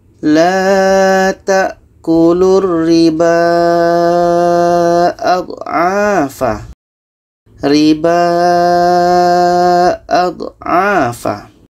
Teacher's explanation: Ba ini adalah dibaca panjang karena ada tanda mat dan ada alif kecil.